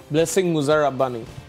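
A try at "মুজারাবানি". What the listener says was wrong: রাব্বানি একটা বি রাবানি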